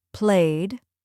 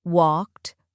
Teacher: Feel how your tongue touches lightly for D and your breath releases for T.